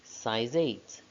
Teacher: word that begins with a vowel sound we say size 8 linking the z at the end of size with the vowel a at the beginning of the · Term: consonant to vowel link